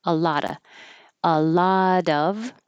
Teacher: A lot of, you don't have to say the v and of